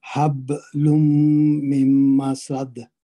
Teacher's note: لام پہ تنوین ہے اور وہ میم مشدد کے ساتھ اس کا ادغام ہوگا · تو با پہ کلکلا صغرا ہوگا، حروف کلکلا میں سے ہے، کتب جد میں سے ہے.